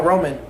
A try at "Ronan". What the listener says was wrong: Ronan, yeah. Ronan. Well, with an N.